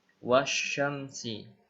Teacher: Wasyamsi, wanya ini pendek, dibaca langsung ke shin. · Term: alif lam asy-syamsiyah